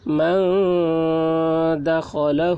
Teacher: نون ساکن کے بعد حروف اخفا میں سے دال آ رہا ہے، اس لیے نون کی آواز کو ناک میں چھپا کر پڑھیں گے